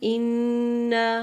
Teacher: نون پر شد ہے، تو اس کو آواز آپ نے 2 سے 3 سیکنڈ ناک میں رکھیں گے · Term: غنہ